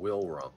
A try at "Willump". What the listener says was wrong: Willump, no R.